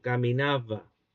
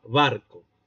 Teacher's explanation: Hay una fricción. Uno muerde un poco el labio inferior. ¿Por qué? Porque está entre vocales. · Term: fricativa